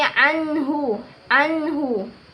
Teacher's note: terdapat di dalam ayat ke-11 yang berbunyi wama yugni Anhu Anhu nun sukun bertemu dengan ha ha besar itu hukumnya izhar halq yang dibaca jelas